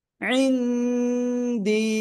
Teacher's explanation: নুন সাকিনের পরে এখানে দাল আসছে, এজন্য আমরা গুন্না করে পড়ব। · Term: ইকফা